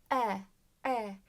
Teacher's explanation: biraz daha böyle kaba Biraz daha kalın ve kapalı bir ses